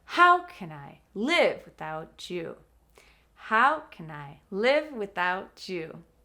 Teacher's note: The other words that are not the question, the verb, or the final without you become smaller.